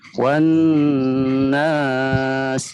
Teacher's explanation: Satu hukum gunah, satu hukum mad. Jadi gunah dulu dipanjangkan baru madnya.